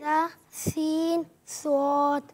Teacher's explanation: जबान की नोक और दोनों दांतों के अंदरूनी किनारों से अदा होते हैं। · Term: हुर्फ सफीरिया